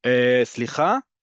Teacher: And then slicha goes up at the top, like you're asking a question.